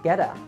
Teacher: Connect get with a and change the T to a D sound